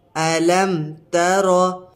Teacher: یہاں پر اظہار شفوی ہو رہا ہے تو یہاں پر غنہ نہیں کریں گے۔ میم ساکن کے بعد حرف با اور میم کے علاوہ کوئی حرف آ رہا ہے، یہاں پر تا آ رہا ہے تو اس میں غنہ نہیں کریں گے۔